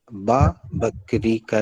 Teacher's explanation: जब दोनों होंठ पूरी तरह से जुड़ते हैं तब बा बकरी का निकलता है